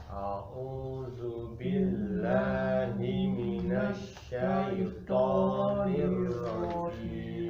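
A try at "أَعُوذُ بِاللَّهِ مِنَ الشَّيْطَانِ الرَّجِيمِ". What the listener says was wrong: Nah, tonya jangan maju. tonya mangap. Monyong ya. A lebar. A buka. Ini zu. Za. Zu. Kalau tidak ditarik rat, maka menjadi du tebal. Du tebal, tipis.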